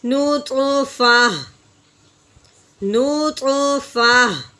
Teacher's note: ہا کی آواز نکالنی ہے، تا کی آواز نہیں نکالیں گے